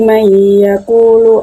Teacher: Huruf idgham biguna terdapat pada bacaan may yaqulu sebab ada nun mati yang bertemu dengan salah satu huruf idgham biguna, yakni huruf ya. Maka cara membacanya adalah masuk dengan sedikit mendengung.